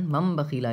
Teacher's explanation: جیسے کہ مم ہے، نون کو میم سے بدل کر پڑھا جائے گا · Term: اقلاب